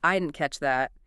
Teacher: the final T in didn't is often dropped, right? And catch that is often linked. It sounds like one unit.